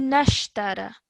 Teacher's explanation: So you're joining the noon to the sheen.